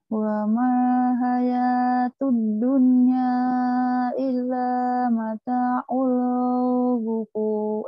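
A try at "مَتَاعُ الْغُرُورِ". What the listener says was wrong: Gurur, bukan gufur. Gurur. Iya, gurur.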